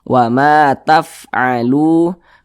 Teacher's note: huruf fa ini dia salah satu huruf yang memiliki sifat hamas. Jadi ketika kita mengucapkannya ada nafas yang mengalir. Jadi ada nafas atau udara yang mengalir.